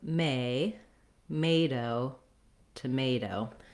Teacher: the stress in tomato is on the may syllable. So that's where I have my clear vowel, and that's where I hold longer. In order to be able to get that rhythm, you may want to start with that stress syllable, may-do, tomato.